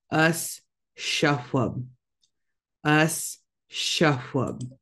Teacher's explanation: make sure you're making both those S sounds the regular s and then the sh sound